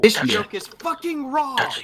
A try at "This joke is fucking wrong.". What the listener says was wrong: I'm sorry. You said it in the wrong tone. This joke is fucking wrong.